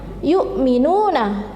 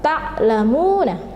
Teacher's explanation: Kemudian contoh lain ta'lamuna, jadi di sini ada dhamma yang diikuti oleh wawu sukun, jadi membacanya 2 ketukan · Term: mat tabi'i